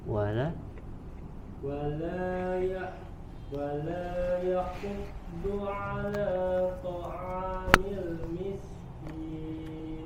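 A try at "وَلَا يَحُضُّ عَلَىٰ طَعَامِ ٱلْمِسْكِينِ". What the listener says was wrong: Huruf dodnya dialirkan suaranya.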